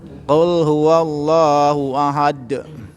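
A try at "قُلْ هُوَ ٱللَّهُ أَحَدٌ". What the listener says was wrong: Baik. Barakallahu fikum Pak. Sudah Pak.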